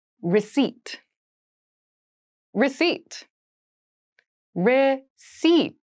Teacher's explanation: There is a P in the spelling of this word, but we do not pronounce it.